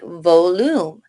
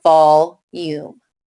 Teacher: separate it after the L making the O short